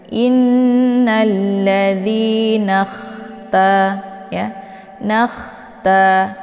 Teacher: Kha ini adalah sifatnya Hamas jadi ada desis anginnya